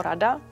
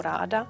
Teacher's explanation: Takže třeba slovo rada, když prodloužíme tu první samohlásku, tak dostaneme slovo ráda a je to fakt jenom v tom trvání samohlásky, co změnilo ten význam slova.